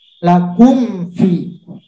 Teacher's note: maka cara membacanya jelas di bibir tanpa berdengung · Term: izhar syafawi